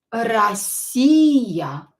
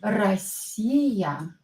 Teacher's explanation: O, not stressed, pronounce it as A